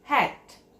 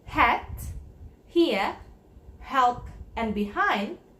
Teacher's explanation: do not touch the roof of your mouth using your tongue and you do not need your voice to produce the ha sound sound is unvoiced and usually it is spelled using h letter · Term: h sound